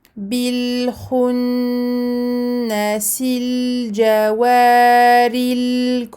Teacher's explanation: on a 2 nouns rouges, on n'oublie pas de les prolonger tous les deux très longuement.